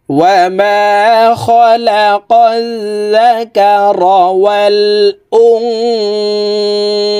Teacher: এখানে ইকফাহ গুন্না, নুন সাকিনের পরে ইকফার হরফ সা আসছে, এই কারণে এই নুন সাকিনকে নাকের ভিতরে লুকাইয়া গুন্নার সহিত পড়ব।